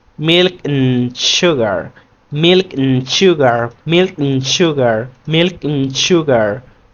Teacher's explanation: When we do pronounce and or and, drop the D